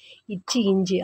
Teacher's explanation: இச்சு, இஞ்சு ஆகிய 2 மெய்களும் நாவின் இடைப்பகுதி நடு அன்னத்தின் இடைப்பகுதியை பொருந்துவதால் பிறக்கின்றன